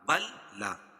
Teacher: لام کا لام میں ادغام ہو رہا